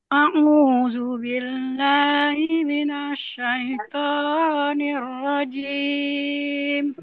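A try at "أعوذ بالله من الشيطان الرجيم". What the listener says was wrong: nah jimnya jangan terlalu tinggi Bu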